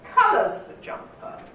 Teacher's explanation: the most likely intonation will not put the nucleus on jumper because that's repeating yourself